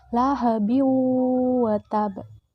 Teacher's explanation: Maka huruf waw harus dibaca melebur dengan huruf sebelumnya, lahabi wa tab. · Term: idgham bi gunnah